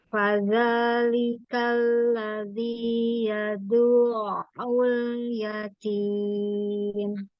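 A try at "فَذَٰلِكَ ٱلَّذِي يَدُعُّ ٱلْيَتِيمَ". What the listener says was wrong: Dalnya langsung masuk kain, jangan dipanjangkan.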